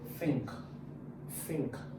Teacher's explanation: It's pronounced as voiceless. It is produced by placing the tongue against the upper teeth and blowing air out.